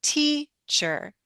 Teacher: that I'm not only lengthening, my pitch goes up, my voice goes up a bit, teacher. And I might even be a little louder. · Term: stress